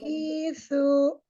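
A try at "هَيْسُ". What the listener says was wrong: Hi-nya panjang.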